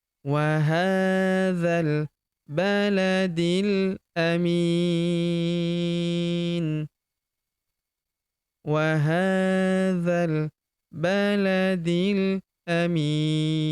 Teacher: Huruf mi kita panjangkan 2, 4, atau 6 harokat karena di depan huruf mi terdapat ya sukun sebelum huruf pemberhentian dan huruf pemberhentian huruf ni kita sukunkan atau kita matikan.